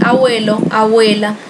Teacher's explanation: há pessoas que dizem abuelo, abuela, e quase não sai também, na verdade não sai o B. E aí seria também uma debilitação, um enfraquecimento da oclusiva.